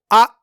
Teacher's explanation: हमजा की आवाज को अचानक काट देना है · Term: हमजा साकिन